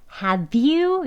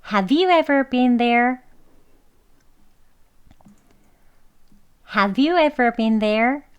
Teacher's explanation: 여기도 have you 하고 have you라고 바로 you가 이어 하는 소리가 연결이 되지요. 자연스럽게 have you 이렇게 발음해서요.